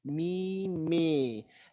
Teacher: I want that to be a little bit more closed, like a European A than an American A.